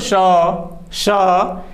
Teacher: अगर इसको हम पूर्ण रूप से बोलते तो श, श, यानी हम इतना श्वास छोड़ते हैं जैसे लगता है कि हमारे गले से कुछ ऊष्मा बाहर निकल रही है। तो ये इस तरह से ऊष्म व्यंजन है।